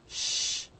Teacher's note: we have two different voiceless sounds palatal sounds